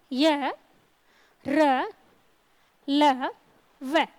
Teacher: इनके उच्चारण में व्यंजनों की तुलना में हवा कम अवरोध होती है, कम रुकती है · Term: अंतस्थ व्यंजन